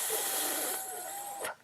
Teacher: voice box and you do that you will not feel anything you'll feel no vibration because it's just air the vocal folds are open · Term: voiceless th